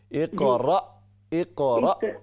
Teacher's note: را کے بعد ساکن حمزہ ہے. اقرا، اقرا جھٹکے کے ساتھ